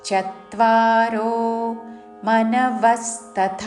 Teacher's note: చ మీద ఆఘాత పక్కనున్న సంయుక్త అక్షరములోని త ద్విత్వము చేస్తూ